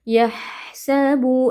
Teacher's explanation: Huruf H keluar dari tengah-tengah tenggorokan ya, disertai dengan aliran suara dan nafas.